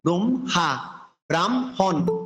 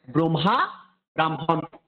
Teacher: ম একটি নসিক্য বর্ণের সাথে হ যুক্ত হলো, সেক্ষেত্রে আমরা হয়ের উচ্চারণটা পূর্বে না করে পরে করতে হবে